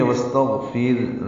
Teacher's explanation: واستغفر را میں را باریک پڑھیں گے